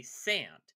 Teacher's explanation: it's called Ash raising and it's a feature of many North American accents · Ash raising before a nasal is just taken as a normal facet of Gen Am speech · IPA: [sɛ̃ə̯̃nd]